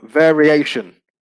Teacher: you can see that the stress has changed from vary to variation. The stress here now is on the penultimate syllable.